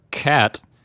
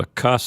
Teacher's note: you close off the back of your mouth and the air starts to build up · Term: stop